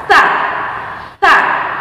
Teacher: ujung lidah dipertemukan dengan gigi seri bagian atas